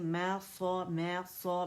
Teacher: اور صاد جو ہے یہ موٹا لیٹر ہے، اس میں صفیر ہے، اس میں رخاوہ ہے، یعنی سیٹی کی آواز ہے، آواز چلے گی اور موٹا ہے